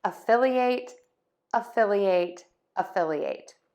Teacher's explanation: I'm kind of having two stress points there. Fill and ate.